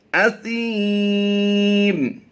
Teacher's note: سا میں سیٹی نہیں ہوتی بلکہ سا نرمی سے ادا کیا جاتا ہے